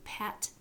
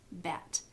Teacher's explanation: I feel that the vibration when I have a b sound. So both of these are bilabials, and the only difference between the two is the voicing, pat, bat, and the b is voiced.